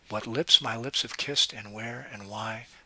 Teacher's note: those ten syllables are broken into five pairs and in each pair the second syllable gets the greater emphasis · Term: iambic pentameter